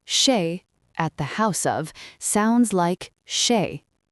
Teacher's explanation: The final Z is usually silent.